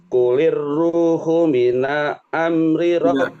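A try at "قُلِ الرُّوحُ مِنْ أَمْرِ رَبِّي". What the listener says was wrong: Pakai minal tapi min. Ketemu nun sukun, ketemu hamzah, dibaca jelas.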